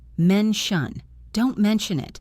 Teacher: Listen to the T sound in mention. It sounds like shush. Mention. Don't mention it.